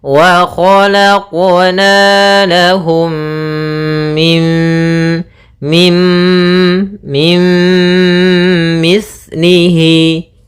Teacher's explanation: ini maka kita namakan dengan bacaan Idgham bhunah cara membacanya adalah memasukkan nunnya kepada mim Tapi tidak secara sempurna karena dia idghamnya idgham naqis maka waalaqna lahum mim mim mim